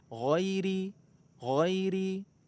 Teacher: giriri Giri beda dengan huruf g Indonesia ya huruf Gin ya huruf Gin itu ada di ujung kerongkongan